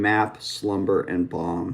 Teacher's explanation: M. And when you make that sound m you can actually feel it tickling vibrating that's from the vibration of the vocal cords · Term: nasal